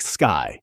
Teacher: And yet your ear hears a dip thong gliding from an open a to a closed e · No vowel letter at the end at all, and yet your ear hears a diphthong gliding from an open ah to a closed e. The letter Y is doing vowel work, even though we file it under consonants in the alphabet song.